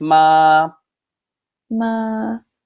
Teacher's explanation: So one of the easiest ones, it's the first tone. It's high and flat.